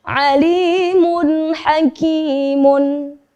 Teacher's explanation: Maka cara membacanya adalah sama, yaitu dengan jelas tanpa disertai dengung. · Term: huruf izhar